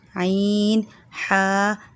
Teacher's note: حلق کا جو ہے آخری حصہ جو سینے کی طرف ہے یہ وہاں سے ادا ہوتے ہیں